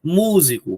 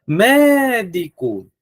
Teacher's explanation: é aquela palavra cuja sílaba tônica é a antepenúltima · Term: proparoxítona